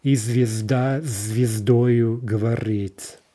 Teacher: Right, so in this case, the s is going to become voiced to assimilate to the following z, right? And so what we get here is kind of a double z, right? We don't hear s, we hear z.